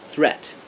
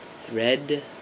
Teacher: we have again a longer vowel before the D and the D is very soft and then the shorter vowel for the tea and the tea